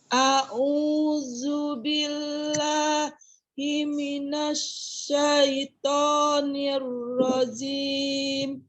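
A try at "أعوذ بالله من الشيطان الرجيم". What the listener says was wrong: Ya, itu masih untuk huruf zalnya ya, karena belum kita pelajari. Nanti huruf zal itu dari ujung lidah ini bertemu dengan ujung gigi seri atas. Zu ya, ujung lidahnya keluar.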